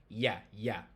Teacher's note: So this I with a hat, it's like the English Y. It's a semi-vowel. It's not a full vowel.